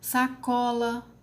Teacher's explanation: Sacola, paroxítona. Có é a sílaba mais forte, é que pronunciamos com mais intensidade.